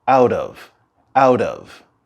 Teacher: listen carefully and you'll hear a little r in between the words out and of